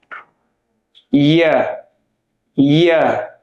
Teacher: ইয়া বলার সময় মুখের যে গঠন হয় শিন আর জিম আমরা যেভাবে বলেছিলাম, জিহ্বার মধ্যখান উপরের তালুর সঙ্গে লাগিয়ে উচ্চারিত হয়, মুখের মাঝখানে হালকা ফাঁকা থাকবে।